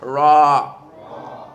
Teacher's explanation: The raw is not smooth like the R in English, even though they may be interchangeable, but the raw is a little bit rough and blows a little bit in Arabic.